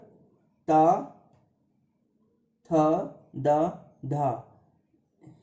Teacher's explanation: जैसे कि B number त, थ, द, ध, इन्हें कहते हैं दंत। ये ऊपरी दांतों के निकट से इनका उच्चारण स्थान होता है